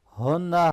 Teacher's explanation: हा को गले के निचले हिस्से से हैवी करके पढ़ना है और नून मुशद्दद पे गुन्ना होगा।